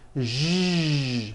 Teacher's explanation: To produce this sound, first make a sh sound, and then you add voicing. Sh, zh, like that. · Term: voiced SH sound